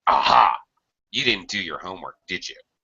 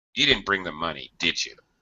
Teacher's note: By using falling intonation, it shows that I am sure. So it makes it sound a lot more like an accusation.